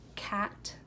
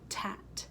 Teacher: the K is usually substituted with the T and the G is usually substituted with the D so it would sound like instead of cat they would say